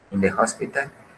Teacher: la H aquí se está pronunciando como la J sería en español.